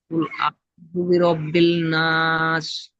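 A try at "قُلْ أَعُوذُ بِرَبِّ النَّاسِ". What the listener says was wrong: নাস নয়, নাস। আপনার সিন আর শিন একই হয়েছে, ওই একই আওয়াজ হচ্ছে। এটাই পার্থক্য করবেন, নিজে উচ্চারণ করবেন বারবার। একটা হচ্ছে নাস, নুন সিন যাবার নাস। একটা নাস, নুন শিন যাবার নাস, দুটোর মধ্যে পার্থক্য আছে, দুটো হরফ আলাদা।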